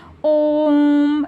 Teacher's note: प्लुत स्वर तीन मात्रा के। जैसे तीन गुना समय लगे। जैसे इसके उच्चारण में दीर्घ स्वर से भी अधिक समय लगे।